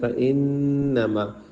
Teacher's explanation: فإنما نون پہ غنہ کرے